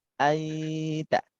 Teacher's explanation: nunnya itu samar dan mendekati ke huruf taknya